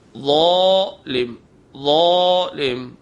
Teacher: آواز کو بھاری کریں گے بغیر سیٹی کے، زبان کی نوک اوپر کے دانتوں کے کنارے پہ لگائیں، ظالم، ظالم۔ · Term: زوئے